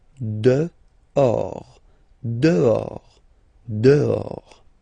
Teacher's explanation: this H in French doesn't exist phonetically, so you don't pronounce it.